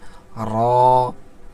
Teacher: জিবার আগার উল্টা পিঠটাকে উপরের তালুর সঙ্গে লাগাইয়া উচ্চারণ করতে হবে